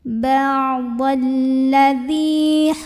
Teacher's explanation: lam yang kedua ba'dalladzi dzi di sini ada hukum Mad Thobi'i karena ada Ya Sukun didahului kasrah di dalal maka dalalnya kita bunyikan panjang dua harakat · Maka dzalnya kita bunyikan panjang 2 harokat. Ba'dalladzi hurrima. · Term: mad tabi'i